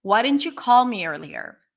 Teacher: And I put the stress on call. Why didn't you call me earlier?